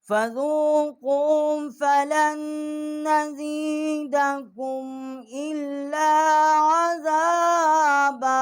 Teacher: लाम जो है हमने उसको नून के साथ जो है मुशद्दद किया है और यहाँ गुन्ना किया है